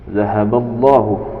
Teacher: lam jalalah pada lafaz Allahu dibaca tafkhim atau tebal karena diawali dengan harokat fathah.